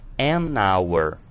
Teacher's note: hour tem um som de vogal, vowel, porque o H é mudo, nós vamos considerar o som de vogal, portanto, an hour.